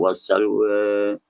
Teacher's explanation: bacaan sedikit condong, sedikit membengkok antara bunyi fathah dan imalah kubra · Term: taqlid